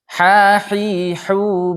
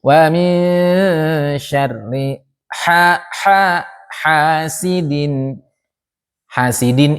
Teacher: Ha termasuk huruf hams. Maka mesti kita tekan dan dia makhrajnya ada di tengah tenggorokan. Kita tekan di tengah tenggorokan insyaallah akan terkeluar hamsnya.